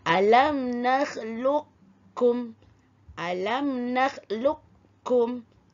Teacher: dimasukkan bunyi qaf yang mati ke dalam kaf yang berbaris kerana qaf dengan kaf adalah huruf yang berhampiran makhraj dan sifat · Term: idgham mutaqaribaini